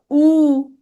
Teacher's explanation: আ, আ, ঠোঁটের ফাঁকা বেশি থাকতেছে । দেখো, উ, ঠোঁটের ফাঁকটা কম, ছোট, এই জন্য এটা সংবৃত।